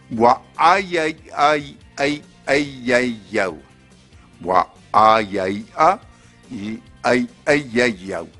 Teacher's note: Le but de cet exercice était de dire une phrase entièrement composée de voyelles glottalisées et mouillées.